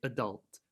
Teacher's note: Generally, Americans will emphasize or stress the second syllable.